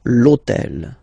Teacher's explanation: in French we don't pronounce H, okay, so basically the first sound of the word is the vowel O